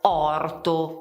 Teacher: La pronuncia è proprio orto con la O, come vedi è aperta